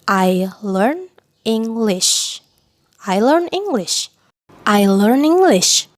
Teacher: N sama E-nya nyatu kan ya